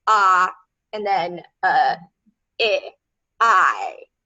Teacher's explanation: Diphthongs are two sounds, like the sound I, which is ah, and then I.